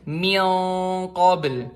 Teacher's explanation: dengungnya itu di daerah area-area amandel di lidah lidah belakang tuh dekat amandel · Misalnya, kita tadi qaf ya, min qabl. Jadi dengungannya itu di daerah lidah belakang. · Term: ikhfa